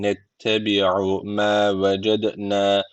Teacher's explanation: D harfi cezim almış. Kalkale tecviti var. Birazcık vurguluyoruz.